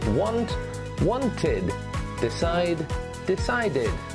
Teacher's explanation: when the verb already ends with a t or d sound, like want and decide. In these situations, we add the sound id.